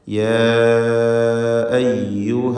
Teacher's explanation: യാ അയ്യുഹ ഇവിടെ അലിഫിന് 4-5 ഹറക്കത്തിൻ്റെ അളവിൽ ദീർഘിപ്പിക്കൽ വേണ്ടതാണ്. ഇവിടെ മദ് മുൻഫസിൽ ജായിസ് എന്ന നിയമമാണ്.